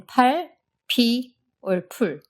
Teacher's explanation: It's also unvoiced and has a lot more aspiration than its English counterpart.